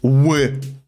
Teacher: And the Polish L makes a W sound.